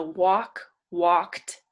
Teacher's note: walked makes like a t sound at the end even though it's a d